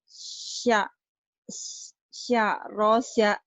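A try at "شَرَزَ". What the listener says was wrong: syaroza, za, jangan sa. Syaroza.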